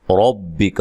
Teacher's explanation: را کو موٹا ادا کرنا ہے، کاف کو باریک پڑھنا ہے